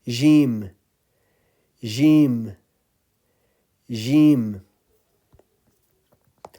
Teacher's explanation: the middle of the tongue is getting closer to the roof of the mouth, but there is no touching.